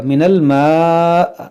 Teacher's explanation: یہاں پر ہم رکیں گے تو یہ حمزہ ساکنہ ہوگا تو اس میں جھٹکا ہوگا